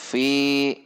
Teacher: Perhatikan sifat dan makhraj huruf fa. Fi bibir atas tidak ikut, tetapi ujung gigi seri atas dengan bibir bawah bagian dalam